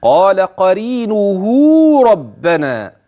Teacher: ولاحظ الياء النون الهاء مرققات ولاحظ حرف المد الواقع بين هاء قرينه وبين راء ربنا قال